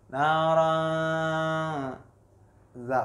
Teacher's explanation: apabila ada nun sukun bertemu dengan salah satu huruf ikhfa. Nah, di sini ada huruf za. Nah, itu dibaca samar-samar. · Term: ikhfa hakiki